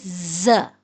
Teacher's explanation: ز سختی سے ادا ہوتا ہے دانتوں کو ملانے سے اور یہ سیٹی والا حروف ہے